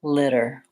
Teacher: These two letter T's make the flap D, and it sounds a little bit more like litter.